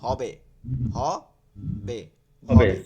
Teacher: এইটা হচ্ছে গোলহা, কোনো বাতাস টাতাস থাকে না, বাংলার মতন পড়তে হয়।